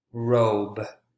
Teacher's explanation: sound essentially the difference between voiced and voiceless voiced consonant sounds you can hear and feel the vibration in your vocal cords when you pronounce that consonant sound